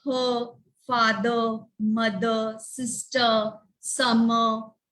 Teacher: We don't pronounce the R. Again, we follow the British accent.